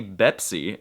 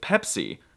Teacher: The only negative thing I can say about the Arabic writing system and phonetics is that there's no letter P. There's no P sound, so they say Bepsi instead of Pepsi